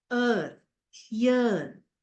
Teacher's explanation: long a sound, central, unrounded vowel between half closed and half open